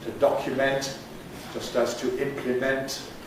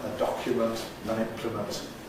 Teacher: the verb keeps the strong vowel in the suffix · the verb keeps a strong vowel in the suffix, to document, just as to implement. and the noun, a document, an implement, weakens it.